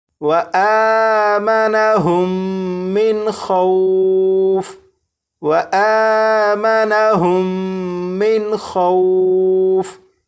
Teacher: لیکن یہاں پر آپ دیکھیں یہاں پر میم ساکن کے بعد دوسری میم ہے تو یہاں پر غنہ کر کے پڑھیں گے. یہاں پر نون ساکن کے بعد خا حروف حلقی میں سے ہے تو یہاں پر نون ساکن کو ظاہر کر کے پڑھیں گے